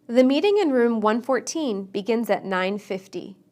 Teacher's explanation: we stress teens on the second syllable and tens on the first